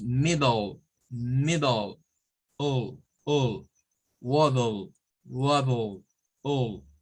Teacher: O sea, es el schwa unido a una L.